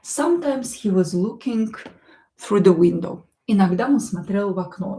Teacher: O, not stressed, will be pronounced as a.